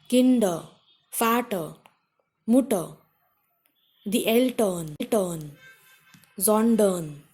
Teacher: Next condition is when there is ER, the combination ER, in that R is not pronounced.